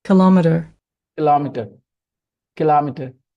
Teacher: The stress is now on the second syllable.